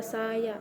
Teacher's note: Vokal ini dihasilkan dengan membuka mulut lebih luas, contohnya A dalam huruf A dalam kata saya. Untuk mengucapkannya, bibir dibuka lebar dan lidah rendah di dalam mulut. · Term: vokal terbuka